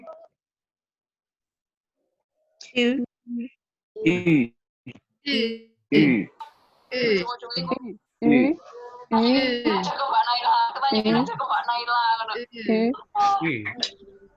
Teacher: Jadi kita ngomong I, tapi mulutnya membentuk U, seperti itu. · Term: U umlaut